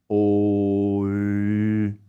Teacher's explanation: the lips stay rounded, but the tongue moves forward